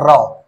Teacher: तालु से रगड़ खाकर नीचे गिरती है। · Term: प्रकंपित व्यंजन